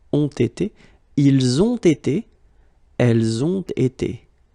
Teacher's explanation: you make the little liaison here as well between the on and été with the t